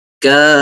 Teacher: کاف زبر الف کا الف مدہ ہو گیا، اور اس کے بعد فا کے اوپر تشدید لگی تو میں نے مد کی ہے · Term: مد لازم کلمی مثقل